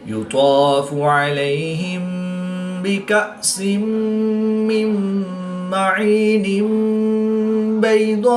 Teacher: وصل کی صورت میں تنوین کے بعد با ہے تو یہاں پر انقلاب ہوگا، یعنی تنوین کو میم سے بدل کر غنہ زبانی کر کے پڑھیں گے